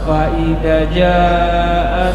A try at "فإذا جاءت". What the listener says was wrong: Fa'idha, zanya panjang.